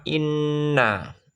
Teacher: Inna bacaan gunnah. Kenapa dibaca gunnah? Karena nun bertasjid. Bacaannya berdengung.